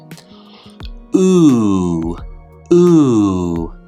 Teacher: When I make this sound, my lips go into almost the same shape as a W or w sound. Ooh, ooh. The end of that sound for me almost sounds like a W, and it's very easy to go into it from that sound.